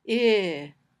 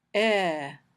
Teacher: When you say I, your tongue is a little higher in your mouth than when you say E.